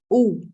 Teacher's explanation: the same ah becomes ooh when the mouth is rounded